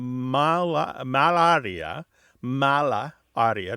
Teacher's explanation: they combine into one word where the a on Mala and the beginning a on Arya make one a